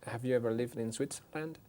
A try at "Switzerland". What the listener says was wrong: No, Switzer. Tiene que oírse la sílaba en medio. Switzer.